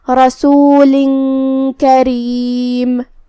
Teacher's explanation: کلمت کریم میں را کے نیچے زیر ہے تو یہاں را کا حکم ہے ترقیق. ہمیں اسے ہلکی آواز میں پڑھنا ہے